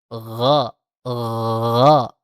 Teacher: digesekkan saja akar lidah kita dengan langit-langit di atas yang lunak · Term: ghain